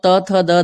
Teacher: दंत वर्ण में क्या होता है कि दांतों को जीभ जो है अंदर से टकराती है